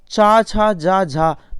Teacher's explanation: चा वर्ग को स्पर्श संघर्षी कहते हैं